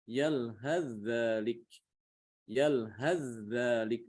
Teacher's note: Ini kalau disambung bacanya dibaca yalhadzalik. Yalhadzalik, langsung ke dzal, diidghamkan ke dzal. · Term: idgham mutajanisain